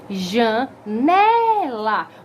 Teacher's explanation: O já e o lá são considerados sílabas átonas, sílabas fracas. · No né, que é a sílaba paroxítona, contando de trás para frente. Então, a segunda, penúltima sílaba da minha palavra. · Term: sílaba tônica, sílaba forte